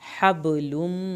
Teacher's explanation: बा का कलकला होगा, मीम की शद पे एक अलिफ के बराबर देर लगेगी